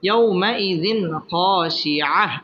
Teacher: তানবিনের বামে খ আসছে খ ইজহারের হরফ এখানে গুন্নাহ ছাড়া স্পষ্ট করে পড়তে হবে